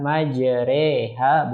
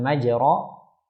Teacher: membaca alif yang dicondongkan antara alif dan ya, sehingga dibaca dua harokat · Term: al-imalah